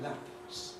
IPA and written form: læpʰs (lapse)